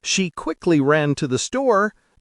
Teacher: there is no pause between quickly and ran